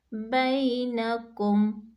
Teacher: باقی بینکم، بئی، ٹھیک ہے، بئی، جب ہم بئی پڑھتے ہیں تو دونوں ہونٹوں کے جو گیلے حصے آپس میں ملتے ہیں۔ بینکم، کم پہ ہمارے جو خشک حصے ہیں دونوں ہونٹوں کے آپس میں ملتے ہیں۔